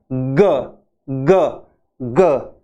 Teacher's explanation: और वॉइस्ड है ग, तो इसमें आवाज ध्वनि ज्यादा आती है और ऐसे हम बोलते हैं ग ग ग।